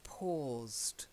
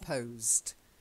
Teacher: an or sound not an O so it's paused not posed